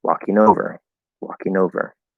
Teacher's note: we keep the same stress but that n sounds like it moves over